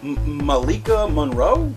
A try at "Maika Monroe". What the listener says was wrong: Yeah, Maika Monroe, I think. I don't think there's an L in that one. Maika Monroe.